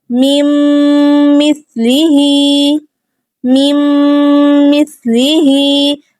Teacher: سا پہ سٹی کی آواز نہیں آنی چاہیے، نرمی سے ادا کریں گے ہم، اور ہا پہ کھڑی زیر ہے تو 2 حرکات ہم اس کو اینڈ پہ کھینچیں گے.